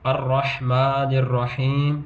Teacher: میم کے اوپر پھر کھڑی زبر ہے، اس کو لمبا کریں گے